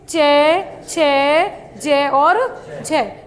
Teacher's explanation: और अंत में संघर्ष हो जाता है। पहले इनके उच्चारण में पहले अधिक समय तक स्पर्श होता है और बाद में क्या हो जाता है? संघर्ष हो जाता है। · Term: स्पर्श संघर्षी